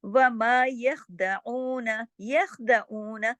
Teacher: خا کو جماؤ کے ساتھ پڑھیں گے، ہلائیں گے نہیں